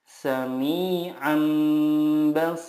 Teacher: mengganti nun sukun dengan mim sukun dan disertai guna 2-3 harokat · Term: iqlab